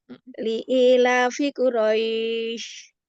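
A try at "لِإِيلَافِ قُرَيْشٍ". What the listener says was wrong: Masya Allah, bagus. Coba sekarang yang 6.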